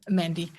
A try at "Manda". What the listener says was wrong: Manda. There's no Y at the end.